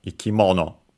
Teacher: accented by the way on the mo ikimono. uh because again uh this is one of the typical uh positions for the accent for such compounds on the first syllable of the second part of the compound.